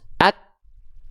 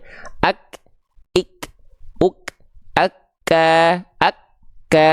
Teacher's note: huruf Kaf ketika dilafalkan dalam keadaan sukun kan dia terhenti dulu suaranya baru keluar percika nafas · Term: syiddah